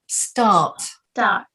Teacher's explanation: Yeah, because we don't say an R. If I was American, I'd say start.